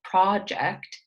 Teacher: project is stressed on the beginning